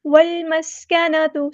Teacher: لام کی شد کو جماؤ کے ساتھ ادا کریں گے، والمسکنۃ، سین کی سیٹی واضح کریں گے